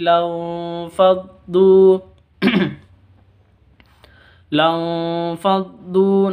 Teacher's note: non sukun bertemu dengan fa, samar disertai dengung. Lanfaddu, du panjang 2 harokat.